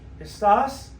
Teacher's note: Estás, ending in AS, the stress should be on the E, but it's on the A.